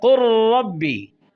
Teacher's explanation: لام ساکن ہے، را متحرک ہے، لام را میں داخل ہو رہا ہے، ادغام متقاربین تام ہوا، پہلے لام کی کوئی صفت باقی نہ رہی۔